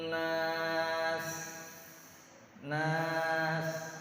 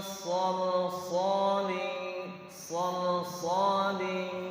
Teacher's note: harus terdengar siulannya, harus terdengar sofir, namanya sofir.